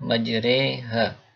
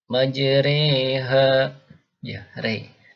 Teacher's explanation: Contohnya dari Al-Quran, majreha ya, ini yang biasanya dibaca ro, ini imalah namanya. Alifnya dibaca imalah, dibaca miring jadi e ya. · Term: al-alifu al-mumalah